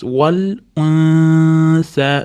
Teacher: Endi alifni ustidagi u ni o'qiymiz. Val unsa, nunda s ga ixfo qilamiz. Val unsa, s dan keyin alif mad, alif mad ni ustida to'lqin ham birga kelayotgan uchun ko'proq cho'zamiz.